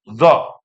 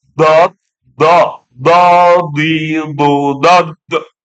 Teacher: Kalau zo itu kan nggak menyentuh. Kalau dot, dot itu menyentuh. Makanya dia buntu, nggak ada nafasnya.